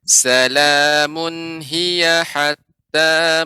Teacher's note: Ya, hiyanya tidak panjang adik ya.